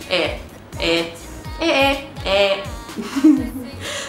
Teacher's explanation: E and E. It's an open sound, you kind of, a little bit of a smile, you go eh. The sound is similar to when someone says something really, really stupid, or you just don't get what someone says and you're like, eh?